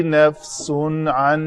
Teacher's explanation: تنوین تھی سین کے اوپر، اس کے بعد حروف حلقی آ رہے ہیں تو ہم نے اس تنوین کا اظہار کیا